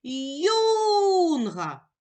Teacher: Наголос падає на перший склад, на склад юн.